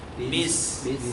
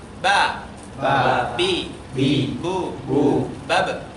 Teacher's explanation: Maka huruf ba ini yang benar tidak mengeluarkan udara. Jadi kalau masih ba, berarti masih salah ya.